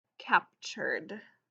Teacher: when there's a t in the middle of a word it sounds like almost like this ch sound